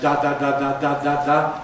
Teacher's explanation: Tongue tip to the alveolar ridge, side rims pressing against the sides of the roof of the mouth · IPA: [d(a)]